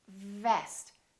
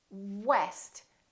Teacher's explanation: a lower lip touching the upper teeth vest and what West we round our lips and the lower lip doesn't touch anywhere